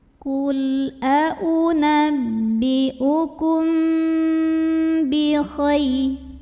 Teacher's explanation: Karena ada mim sukun yang bertemu dengan huruf ba, maka cara baca mim sukunnya adalah didengungkan. Kalau kita menggunakan yang versi rapat bibir, maka rapat bibirnya itu tidak terlalu menekan, cukup lunak saja. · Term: ikhfa syafawi